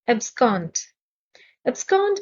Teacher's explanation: stress is on the second syllable